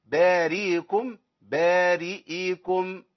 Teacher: كده انا اسقطت الهمزه او خليت الهمزه مبدله بياء